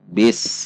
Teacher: Huruf sin ketika sukun maka dibaca tidak tertahan. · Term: sin sukun